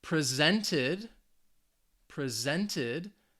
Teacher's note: this is the verb the stress is on that second syllable again this is in the past tense so the ed is